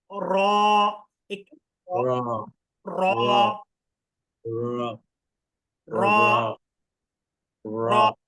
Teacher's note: জিহ্বার আগার পিঠ তার বরাবর করে তালুর সঙ্গে লাগিয়ে র, একটু র র র এরকম একটা ধাক্কা দিলে তাহলে একটা উচ্চারণ হবে, সুন্দর হবে।